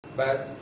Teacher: Oh berartinya adalah ketika ujung lidah bertemu dengan bagian belakang dari gigi seri depan bagian bawah. Bas. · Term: huruf sin